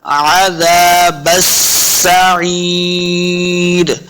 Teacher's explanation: بس با کو سین کے سام لانا ہے، سین مشدد ہے، سین پہ سیٹی کی آواز آنی چاہیے · بس عین زیر یہ یا مدہ ہے، اس کو دو حرکات لمع کرنا ہے. آخر را پہ وقف کریں گے، را کی آواز آئے گی